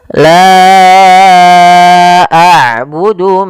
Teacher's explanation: Maka hamzahnya di lain kata. Maka panjangnya la kita panjangkan sepanjang empat harakat dan kita hukumi bacaannya dengan bacaan mad jaiz munfasil.